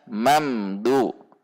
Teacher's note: Mim fathah, di depannya ada huruf mim sukun. Mam, mim sukun di depannya huruf dal, maka mim sukun dibaca izhar syafawi, dibaca mamdu.